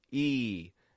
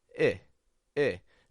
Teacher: and e i e the difference as I said is subtle when we make that e sound lots of pressure between the back of the tongue and the top teeth e and then I I no pressure just lightly touching the top teeth very lightly